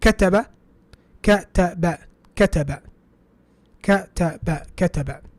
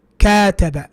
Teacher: Difference between كتب, the ka is 1 count. كاتب is 2 counts.